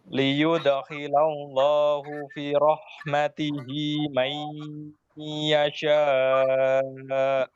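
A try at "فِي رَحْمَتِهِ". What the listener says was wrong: Fi panjang fi.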